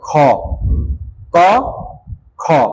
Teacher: এই হাত দিলেও বুঝতে পারবা ক এরপরে দেখো খু ক খ ক যখন তুমি উচ্চারণ করছো তখন কিন্তু বাতাস অল্প বের হইছে আর যখন তুমি খতেছো তখন কিন্তু বাতাস বেশি বের হচ্ছে